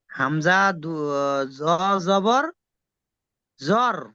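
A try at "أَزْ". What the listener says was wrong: আজো, আজো, আজো। জ্বর কেন হচ্ছে ভাই? প্রথমে হামজা জাবার আর তারপরে আছে। হামজা জাবার আর তারপরে তাহলে দুটো মিলে কি হয়? আজ।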